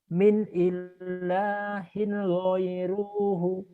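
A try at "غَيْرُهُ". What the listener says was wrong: Nggak ada yang panjang. Nah ini Pak, nanti kalau baca Quran ini jadi pendek. Goiruh. Karena di Iqra 4 dibaca apa adanya panjang gitu ya Pak.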